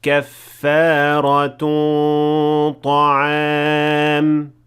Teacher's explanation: And at the end of it there is also إخفاء with غنة. The غنة here is full mouth because the letter that comes after it is ta, which is a full mouth letter. So in order to merge them properly, you have to make the غنة also in full mouth.